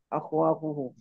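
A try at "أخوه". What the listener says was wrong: akhu, bukan akhwa. Akhuhu.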